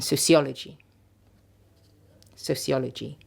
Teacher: weak weak strong weak weak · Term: stress pattern